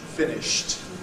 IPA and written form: ˈfɪnɪʃt (finished)